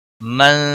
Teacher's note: نون ساکن کے بعد حروف اخفا کا زا آیا ہے، اس لیے اخفا حقیقی ہوگا، گناہ کے ساتھ پڑھیں گے۔